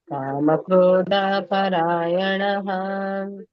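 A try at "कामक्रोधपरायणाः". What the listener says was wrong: ಅಲ್ಲೊಂದು ದೀರ್ಘ ಹೋಯ್ತು ಮತಜಿ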